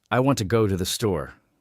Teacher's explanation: When I say it, I stress I, want, go, and store. The words to and the are much softer, almost like background music,